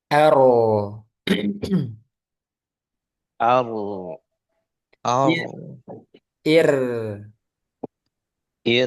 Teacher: jadi ada getarannya, ada takrirnya, hanya saja tidak berlebihan.